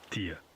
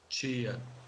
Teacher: In Portugal, it's T, though the vowel may be reduced in unstressed syllables. In Brazil, it's Chi.